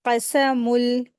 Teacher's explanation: तनवीन की जो नून की आवाज़ है वो लाम में बदलेगी। क़समुल, इस तरीके से इसको पढ़ेंगे।